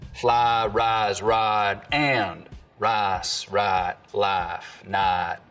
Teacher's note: smooth out the i diphthong the price vowel in some words and we get a long ah sound · full price smoothing, where some Southerners smooth the diphthong in words like fly, rise, and ride, but use a diphthong in rice and right